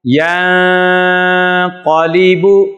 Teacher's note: نون ساکن کے بعد حروف اخفا میں سے قاف آ رہا ہے اس لیے یہاں پر بھی غنہ کیا جا رہا ہے